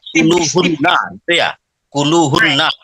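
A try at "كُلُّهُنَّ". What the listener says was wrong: Jadi maksud saya itu ininya keluarnya H gelung dengan H besar itu kan memang beda, right? Kemudian hu itu terlalu tipis Bapak bacanya. Memang bukan hu tapi hu, diembus hu. Bukan hu kayak alif aja hu gitu.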